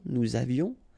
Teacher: final S not pronounced, and then little liaison